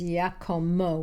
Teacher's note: it becomes Iacomo with an M instead of a B sound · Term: M sound